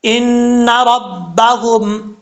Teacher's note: نون مشدد ہے، 1 الف کی مقدار غنہ کر کے پڑھیں گے. آگے میم ساکن کے بعد بار ہے، یہاں پہ بھی 1 الف کی مقدار غنہ کریں گے.